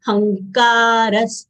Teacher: Hankaras, a full letter followed by conjunct letter, half nasal consonant of guttural varga, and ka full letter having long sound will give stress of half nga over ha. Hankaras, ra full letter followed by visarga. Visarga sound comes out as half sa.